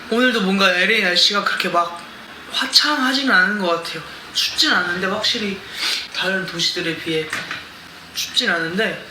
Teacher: of a bit of a horse voice when he speaks so it sounds kind of raspy like he's pronouncing things from the back of his throat